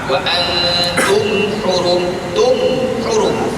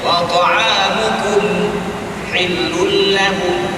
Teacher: dibaca dengan wajib diizharkan tanpa dengung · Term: izhar syafawi